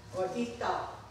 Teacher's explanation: They don't pronounce the S.